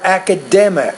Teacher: put stress on the third syllable make it clearer louder longer and also higher pitched